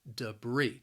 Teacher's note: the word has two syllables and the stress is on that second syllable debris now that first syllable also it has that schwa sound